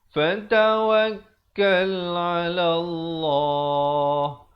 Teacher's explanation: lafz jalalahnya dibaca tebal kerana datangnya fathah sebelumnya